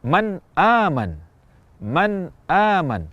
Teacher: misalnya nun mati bertemu Hamzah di kata Man aman Man aman kita ucapkan Nun dengan jelas tanpa tambahan kadar gunah dan juga tidak ditahan dalam waktu yang lama atau kadang sebagian orang memantulkan bunyi Nun atau tanwinnya Padahal tidak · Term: izhar